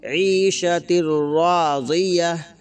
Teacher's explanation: جب ہم یہاں پر وقف کریں گے تو گول تا ہا بن جائے گی